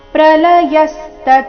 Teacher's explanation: ಪ್ರಲಯಸ್ತ ಯ ಮೇಲೆ ಆಘಾತ